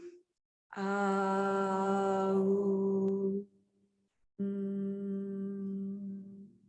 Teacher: it's pronounced as a prolonged mm. So you start to feel like the top of your mouth vibrating a little bit.